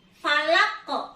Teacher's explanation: Pada kata falaq terdapat qalqalah yang artinya harus dipantulkan.